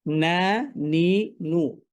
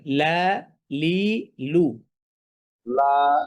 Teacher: নুনটা একটু সামনে আর লামটা একটু পেছনে